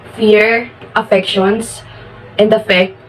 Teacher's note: on the phonological level, the sequence of labiodental fricatives, fear, affections, and affect in the first line